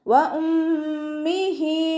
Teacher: ഹംസയുടെ മഖ്റജ് സൗണ്ടിനെ clear ആക്കി കൊടുക്കുക. മീമിന് ശബ്ദ അഖ്മൽ ഉന്ന നല്ലോണം മണിച്ചു കൊടുക്കുക.